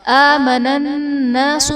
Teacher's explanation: نون مشدد ہے، یہاں پر غنہ کر کے پڑھیں گے